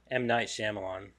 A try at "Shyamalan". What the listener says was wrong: Shyamalan. The Y is silent.